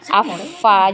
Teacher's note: karena huruf fa ini dia juga punya sifat, selain hamas itu dia punya sifat rohoa, maka ketika dia ditasdid ya, tidak terputus suaranya.